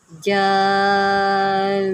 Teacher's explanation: تشدید کو باقی رکھیں اور یہاں پر نون میں گنہ کریں